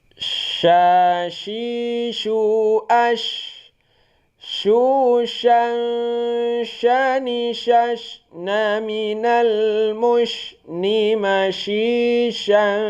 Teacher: Bunyi huruf sya dia itu di tengah lidah.